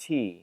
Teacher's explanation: his teas are not formed against the roof of his mouth but rather against his teeth because his tongue goes so far forward in his mouth